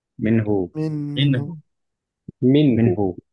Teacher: মিন ধরে রাখবো না, কারণ মিন ধরে রাখা মানে হচ্ছে গুণনা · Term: ইজহার